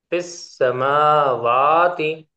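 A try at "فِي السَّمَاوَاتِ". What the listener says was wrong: जबरदस्त, माशाल्लाह, अल्लाह युबारिक से।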